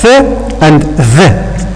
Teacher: These 2 sounds are produced by putting our tip of the tongue between our teeth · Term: interdental consonants